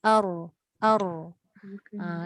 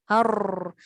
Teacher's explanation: Tapi getaran untuk ra ni cukup 2 kali. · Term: takrir